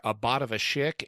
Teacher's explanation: it's a variant where instead of swapping the first two sounds you swap the vowels